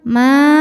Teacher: Maka ma-nya ini dipanjangkan 4 atau 5 harokat ya, nggak boleh 2 kalau mad wajib. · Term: mad wajib muttasil